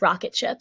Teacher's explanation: in English the phoneme R is not a rolling sound it's shorter and your tongue does not touch the roof of your mouth therefore there is none of that rolling sound or like the